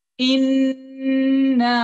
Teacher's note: the hunna you elongate once in your nose. And then you elongate the alif only up to 2 count.